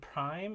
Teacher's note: And so if we compare the P in prime and the P in speech, we see that the P sound in prime is aspirated at the beginning of a word, and more so that it kind of devoices or aspirates the following R, so there's no vibration until you hit the vowel prime.